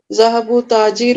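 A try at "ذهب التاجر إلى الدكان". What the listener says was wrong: ذهبوا نہیں پڑھنا, ذهبوا نہیں, دیکھو ذهبوا نہیں ہے ادھر.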